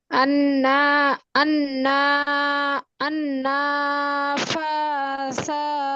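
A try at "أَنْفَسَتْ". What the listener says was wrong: নুনে টান নেই আপু। আন্নাফাসাতি, আন্নাফাসাত। কিন্তু এখানে সাতি বলা যাবে না, যদিও আমি সাতি পড়ছি, এখানে অক্ষ আছে যেহেতু, তাহলে পড়তে হবে আন্নাফাসাত।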